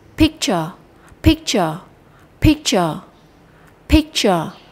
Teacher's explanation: Chúng ta sẽ đọc pick nó cao hơn, nó rõ hơn, nó mạnh hơn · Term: trọng âm